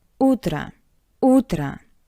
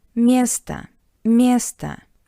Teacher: And I want to remind you that in these two words, o sounds like a because it's unstressed